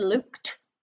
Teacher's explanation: if we say the word looked it sounds like it's got a t at the end